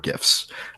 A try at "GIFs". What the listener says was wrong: Oh, you pronounced it with a hard G.